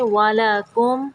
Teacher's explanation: یہاں پہ میم کو ظاہر کریں گے، غنہ نہیں کریں گے